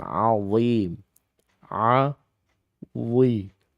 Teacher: Dan huruf dhim di situ dhi itu harus dibaca isti'la, terangkat lidahnya ya dengan keadaan yang tebal